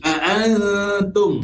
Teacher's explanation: Nun mati bertemu dengan huruf ta. Ikhfa hakiki. Antum. Maksudnya ialah kita kena dengung sebanyak dua harakat